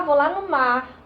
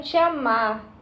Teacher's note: esse r quase não é pronunciado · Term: subtração do fonema final